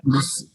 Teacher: فی الارض یا مدہ تھی, حذف ہو گئی